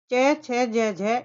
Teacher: संपूर्ण च वर्ग च छ ज झ यह तालु के स्पर्श से उच्चारित होता है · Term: तालव्य